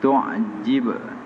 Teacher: qalqalah sugra maksudnya lantun yang kecil